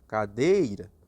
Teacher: Exemplo de paroxítona, cadeira. Onde está a sílaba mais forte? No deira.